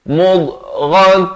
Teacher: Mudghah ghain makhrajnya di ujung kerongkong.